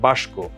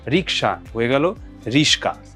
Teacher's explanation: দুটি ব্যঞ্জন পরস্পর পরিবর্তন, সাবস্টিটিউট হয়ে যাচ্ছে। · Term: ধ্বনি বিপর্যয়